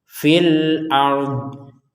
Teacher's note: Ternyata nyambungnya kepada alif lam. Maka panjangnya fi sudah hilang. masuk kepada alif lamnya.